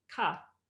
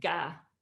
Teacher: For example, if you put your hand at where your voice box is on your throat, if you say ka, you won't feel a lot of vibration. If you say ga, you'll feel a little more